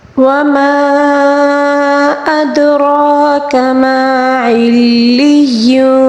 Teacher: را کو پر پڑھیں گے